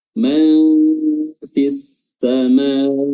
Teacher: Oke, di sini ada idgham asy-syamsiyah ya, di mana alif lam bertemu dengan huruf sin dimasukkan langsung